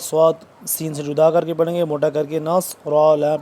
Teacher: صاد سین سے جدا کر کے پڑھیں گے، موٹا کر کے